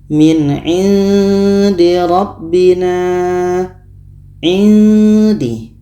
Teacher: Ini ikhfa hakiki, jadi kita samarkan. Ketika sebut huruf nun, kita sudah merasakan huruf da.